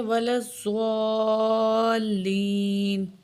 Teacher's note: یا ساکن ہے، اس سے پہلے زیر ہے تو یہ حروف مدہ میں سے ہے تو یہ بھی تھوڑے سے کھینچیں گے